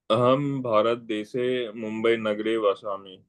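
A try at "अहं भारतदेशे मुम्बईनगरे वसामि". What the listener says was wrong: And then when you are in Sanskrit, you have to say Bharata Deshe, not Bharat. So Hindi, the Bharatam, Bharata becomes Bharat. That last letter is cut short in Hindi. Most for many of the things, like you say Ram. Okay, but when it comes to Sanskrit, you have to say the full thing.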